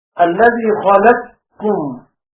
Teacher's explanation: وأدغم السوسي القاف في الكاف إدغاما كاملا، إدغام متقاربين كبير.